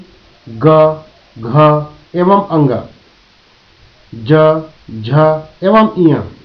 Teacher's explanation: घोष व्यंजन, वे व्यंजन जो निकलते समय वाक तंतुओं में अधिक हलचल करते हैं, घोष व्यंजन कहलाते हैं।